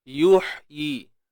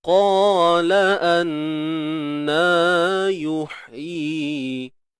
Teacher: Dekat tengah kerongkong. Dia sama macam huruf ain. Kita kena sempitkan. Boleh nak sempitkan bahagian tengah lidah. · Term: habdas